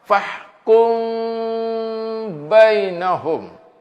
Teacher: Kita baca dengung, tutup mulut tapi tak rapat. Macam mana bila tak rapat? Bila tak rapat, dia ada sikit dengung dia keluar, angin dia keluar sikit ke mulut kita. · Kita dengung, kita baca fahkum bainahum. Kita baca dengung, tutup mulut tapi tak rapat. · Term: ikhfa syafawi